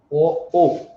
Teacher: এই দুটো বর্ণের জন্য দুটো জায়গা দরকার হয়, কণ্ঠ আর ওষ্ঠ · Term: কণ্ঠস্থ বর্ণ